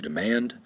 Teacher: The accent is going to be over the second syllable